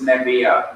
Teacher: There is some change in the first syllable. Instead of the kames in the first syllable, it becomes a vocal schwa, ne. The V remains the same, the aleph remains the same, but what you add is kames he, and it produces nebiya.